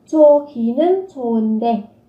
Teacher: Ở đây các bạn sẽ có 좋기는 좋은데, phát âm là các bạn sẽ nối âm lên, hờ và cờ khi gặp nhau các bạn phát âm thành âm khờ